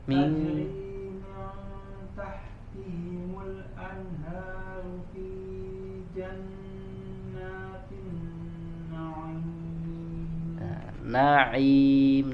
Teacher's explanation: Na'im, nun dan ain ya sama-sama tidak boleh masuk ke hidung.